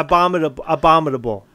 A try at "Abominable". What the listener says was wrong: No, you put a D. In it. Abominable.